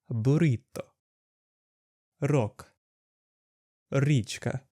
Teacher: The next sound is the ruled R sound. This sound is pronounced by vibrating the tip of your tongue against the roof of the mouth, like in Spanish and Italian.